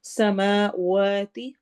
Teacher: سماواتی واو میں ہونٹ گول ہوں گے